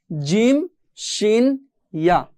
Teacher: এরপরে 6 নাম্বার মাখরাজ একটু দেখে নেই, জিহ্বার মাঝখান হতে তার বরাবর উপরে তালুর সঙ্গে লাগিয়ে পড়তে হয়